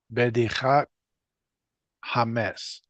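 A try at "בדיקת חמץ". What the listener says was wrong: Beautiful.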